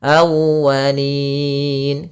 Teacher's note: tekan di wawnya awwa untuk menyempurnakan daripada makhraj wawnya, monyongkan sedikit.